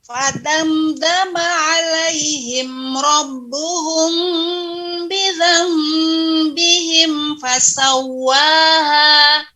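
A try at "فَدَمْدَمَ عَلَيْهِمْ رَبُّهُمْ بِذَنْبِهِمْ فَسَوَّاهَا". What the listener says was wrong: Ini iklab ya. Jangan sampai terlalu ditahan. Ya, jangan sampai bibir ini terlalu menahan bizam, tidak, tapi ditempelkan saja ya.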